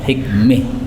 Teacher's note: kalau berhenti boleh imalah hikmih